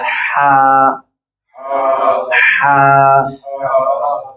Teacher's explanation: ये हा जो है खलक के दरमियाने हिस्से से अदा होती है